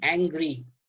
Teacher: angry is a bisyllabic word, and the first syllable is stressed and the second syllable is unstressed. So here we have an example of trochee.